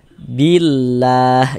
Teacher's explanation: maka lafaz Allah huruf lam jalalahnya dibaca tarkik, dibaca tipis